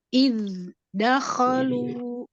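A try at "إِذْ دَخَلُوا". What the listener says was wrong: Itu diputus nggak suaranya? Jangan diputus ya. Izhar itu nggak boleh saktah. Kecuali memang izhar dengan saktah.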